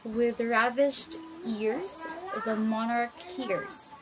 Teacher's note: consisting of two iambic feet or two pairs of first unstressed and a second stressed syllable